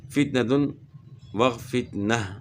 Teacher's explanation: وقف کی صورت میں جو ہے نا گول تا جو ہے یہ جو ہے نا ہائے ساکنہ سے تبدیل ہوگی